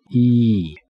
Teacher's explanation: the first one is closed front vowel look at the picture the teeth are almost touching and the tongue is in the front part of the mouth